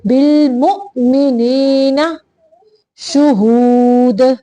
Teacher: یہاں پہ بالمؤ پہ جھٹکا دینا ہے حمزہ کو ساکن کرتے ہوئے